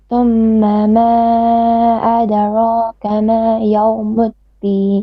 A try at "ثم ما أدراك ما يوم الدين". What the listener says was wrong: Okay, it's not bad. You're saying a bit too flat and bit stretchy on the alif. You say ma adara, ad. No, it's ad, not ad.